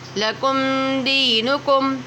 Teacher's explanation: میم ساکن کے بعد دال آ رہا ہے، واو اور میم کے علاوہ کوئی بھی حرف آئے گا تو اظہار شفوی ہوگا